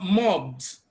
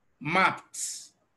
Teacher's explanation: when it comes after a voiced consonant is pronounced as D but when it comes after a voiceless consonant is pronounced as t